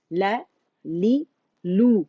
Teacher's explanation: اب آپ دیکھیں آپ نے لا بولا تو آپ جبڑا اوپر کی ڈائریکشن میں کھلا ہے. لا لی کے لیے نیچے ہوا جبڑا ایک کاؤنٹ کے لیے، اور زبان کا درمیانی حصہ اوپر ریز ہو گیا.